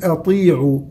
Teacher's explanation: الطاء من حروف التفخيم لكن مكسورة أقل درجات التفخيم، فنقول أطيعوا وليس أطي أطي أطي، محاولة تفخيم مع دخول الشفتين في موضوع التفخيم ليس له أصل.